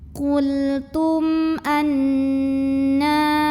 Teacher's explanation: Alif yang ada harokatnya pada hakikatnya adalah hamzah. Maka cara baca mim sukunnya adalah diizharkan atau dibaca dengan jelas bunyi M-nya. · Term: izhar syafawi